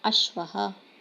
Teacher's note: यहाँ श्व है, तो हमें आधा श सुनाई दे रहा है